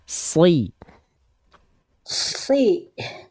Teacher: huruf Shad adalah huruf yang tebal maka pangkal lidahnya diangkat coba bunda Ikuti saya si jadi mengangkat pangkal lidah itu kalau